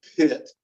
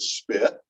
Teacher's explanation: We don't think about aspirating a P on pit and not aspirating it with spit. But those two P's are really quite different.